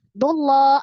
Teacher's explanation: Dullah ada alif lam yang melekat pada lafaz Allah. Lafaz jalalah. Sebelumnya dhamma dullah, maka dibaca dengan tebal tafkhim.